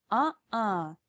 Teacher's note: well the space between your vocal cords is called the glottis to make a glottal stop you close this space stopping the flow of air in your throat and not in your mouth